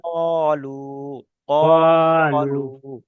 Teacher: ওয়াও সাকিনের ডান দিকে পেশ এসছে, পেশটি হলো হারকাত, হারকাতটিকে এক আলিফ ওয়াও পরিমাণ সাকিনের টান ডান দিয়ে দিকে পেশ এসছে, একে ওয়াও মাদ্দা বলা হয়, ওয়াও মাদ্দা। ওয়াও মাদ্দাটা এক আলিফ পরিমাণ টান দিয়ে পড়তে হয়।